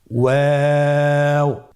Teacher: দুই ঠোঁট গোল করে মাঝখানে ফাঁক রেখে হরফটি উচ্চারণ করতে হবে